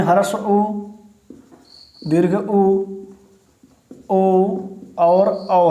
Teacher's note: ये ऐसे स्वर हैं जिनके उच्चारण में हमारा जो ओठ है वो आगे उभरा होता है, एक गोल शेप में हो जाता है, ठीक है, एक वृत्ति की भांति आकार ग्रहण कर लेता है, तो उन्हें बोला जाता है वृत्ताकार स्वर, ठीक है।